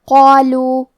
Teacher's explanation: کلمت قالو میں قاف ہے اور اس کے بعد مد الف ہے تو ہم یہ دونوں حرف کو تفخیم سے مطلب بھاری آواز میں ادا کریں گے